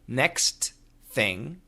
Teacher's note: when we say next thing fast, the T and the TH combine. They link. And we only hear the TH.